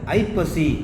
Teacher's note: அந்த ஐ வந்து ஒன்றரை மாத்திரையா ஒளிக்குது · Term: ஐகார குறுக்கம்